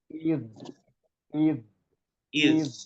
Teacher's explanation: Zal itu makrotnya ujung lidah, toroful lisan, ujung lidah bertemu dengan ujung gigi seri atas.